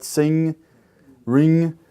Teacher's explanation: And so that's why we call it a nasal, because the flow of breath is going to be pushed up in your nasal cavity when you pronounce it